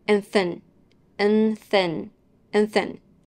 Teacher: and is a function word it's unstressed and reduced which is why we will drop the D sound and connect it to the th sound in the following word and the letter A will make the schwa sound and thin